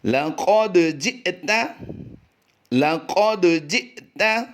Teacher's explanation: دال پر قلقلہ کریں گے اور حمزہ ساکنہ پہ جھٹکا دیں گے